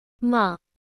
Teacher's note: the tone Rises up as if asking a question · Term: Rising tone